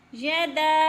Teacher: یدا پہ مد متصل ہے، یعنی 4 الفی مد ہے، اس کو 4 الف کے برابر لمبا کر کے پڑھیں گے، یعنی کھینچ کر پڑھیں گے۔